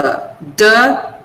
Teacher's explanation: The blade of the tongue touches the teeth ridge.